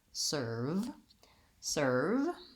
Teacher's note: To make the V sound, make sure the lower lip and the upper teeth connect, the sound continues, and that I'm not blocking the air or rounding the lip. Serve, serve.